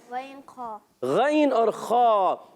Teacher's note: حلق کے اوپر والے حصے سے 2 حروف ادا ہوتے ہیں۔